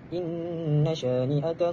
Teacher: Inna bacaannya ialah hukumnya hukumnya ialah nun syaddah yakni wajibul al-ghunnah. Bacaan dengan ghunnah dengan kadar dua harakat.